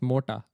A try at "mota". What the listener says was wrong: added an R sound on the T, is what I'm hearing. Morta. Morta. Morta.